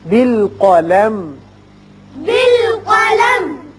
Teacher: میم کو قلم یہ نہیں کرنا، میم کا اظہار ہوگا شفوی